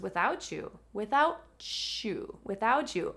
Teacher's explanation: Do you see what happens between without and you? We don't differentiate the T and the Y sound when we're speaking quickly. It actually joins together to become ch.